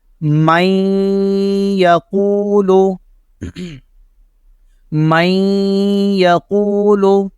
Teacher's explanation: یہاں پہ ادغام لگ رہا ہے اور نون ساکن کے بعد یا آ رہا ہے, اس لیے یہاں پہ غنہ ہوگا. مئی, یہ غنہ ہو رہا ہے.